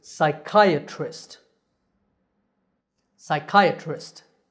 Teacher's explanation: And the word ends with trist. The stress is on the second syllable, so this word is psychiatrist. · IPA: /saɪˈkaɪ.ə.trɪst/